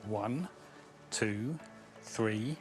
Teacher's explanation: we have a rising intonation on the hours so it's like one two three and then a falling intonation